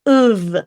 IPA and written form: əf (of)